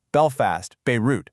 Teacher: You should also point out the plosive alliteration in the harsh, aggressive B sounds of Belfast, Beirut. I mean, say it out loud, you can actually feel it.